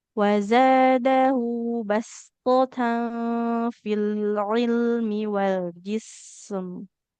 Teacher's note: To-nya tebal di sini ya. Terangkatnya pangkal basto.